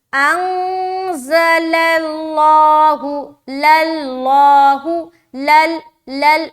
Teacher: क्योंकि इससे पहले जो लाम है इसके ऊपर ज़बर है। ध्यान रहे, सिर्फ और सिर्फ लफ्ज अल्लाह का लाम मोटा होगा, बाकी हर लाम बारीक रहेगी। बाज़ औकात जब लफ्ज अल्लाह के लाम से पहले लाम होता है तो जब लोग अदा करते हैं तो पहले से ही मोटापन जाहिर होने लगता है, यानी कि ये लाम भी मोटा हो जाता है।